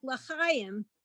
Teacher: So a word like l'chaim, we accent the first syllable